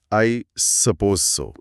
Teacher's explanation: इसमें आवाज पहले नीचे जाती है और फिर थोड़ी ऊपर उठती है। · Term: गिरता उठता अनुतान